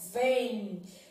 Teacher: podemos sendo que o m tem som de i ou seja esse m tem um som de semi vogal